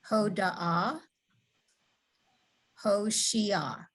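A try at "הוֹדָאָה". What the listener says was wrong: Right, good.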